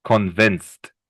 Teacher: But the D at convinced, the end, you pronounce more like a T.